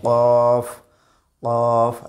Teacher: জিহ্বার গোড়া তার বরাবর উপরে তাবুর সঙ্গে লাগিয়ে আমরা কফ হরফটি আদায় করব।